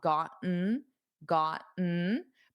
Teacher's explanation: notice the first time I pronounced it with the Ts. I don't normally do that in spoken fast spoken English. I would do the glottal stop.